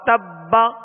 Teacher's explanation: اور اس کو جب یہاں وقف کریں گے مشدد حرف پر, تو اس کو مزید جو ہے قلقلہ واضح ادا ہوگا, یعنی وتب با کی آواز واضح ہوگی. وتب حرکت نہ پڑھیں بلکہ ساکن ہی ادا ہو, اور با کی آواز جو ہے لوٹ کر آئے, یعنی اس میں جنبش ہو.